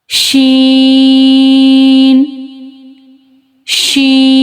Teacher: Sheen pronounced as using middle of tongue to touch the middle part of palate. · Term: spread sound